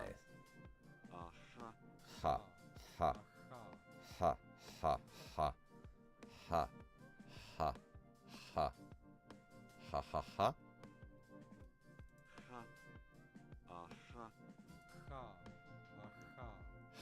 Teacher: My instinct tells me it's the voiceless velar fricative.